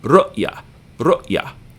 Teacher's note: Say that with the glottal stop sound in the middle of the word.